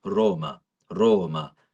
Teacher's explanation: The O had to be longer